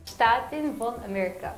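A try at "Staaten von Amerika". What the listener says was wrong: I think her problem is she keeps pronouncing the V as a V and not an F, because in German it's von and not von, you know, von, not von, you know, like it makes sense.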